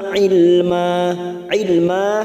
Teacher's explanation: fathah tanwin fathatain yang dibaca wakf namanya bacaan Mad Iwat dua harakat kita panjangkan ini juga cabang dari madii namanya Mad Iwat karena ada harakat